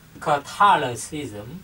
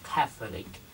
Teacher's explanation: Một cái là Catholicism, một cái là Catholic, chúng ta nhấn vần 1. Catholicism, chúng ta nhấn vần 2. Catholic, chúng ta nhấn vần 1.